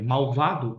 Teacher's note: o l pode ter som de u né lua e quando eu digo eh malvado o l tem